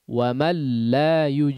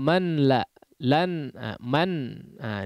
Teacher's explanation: nun sukun atau tanwinnya melebur kepada huruf berikutnya lam atau ro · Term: idgham bilagunnah